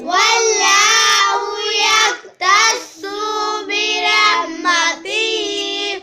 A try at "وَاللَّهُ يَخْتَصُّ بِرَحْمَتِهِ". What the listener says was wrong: یکتسول، سوق لمبا نہیں کرنا، یکتس برحمتہ، واللہ یکتس برحمتہ، یکتس، واللہ یکتس برحمتہ،